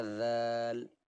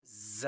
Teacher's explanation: اس حرف کی آواز میں نے آپ کو بتا دی ہے، زبان باہر کر کے اوپر کے دانتوں کی نوک پر اس کی لگے گی تب یہ نکلے گا ذال، لیکن یہ وہاں سے نکلے گا جہاں سے سین نکلتا ہے سختی کے ساتھ، ز۔